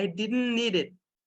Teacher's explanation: Então, ele vai ser assimilado aqui, vai ficar I didn't need it. T vai sumir.